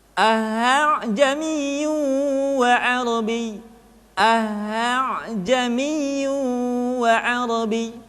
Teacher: hamzah kedua dibaca dengan suara yang samar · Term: tashil